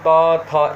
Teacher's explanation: तो दंत्या में दंत वर्ण जिह्वा ग्रहण करना, जिह्वा के अग्रभाग से उच्चारित किए जाते हैं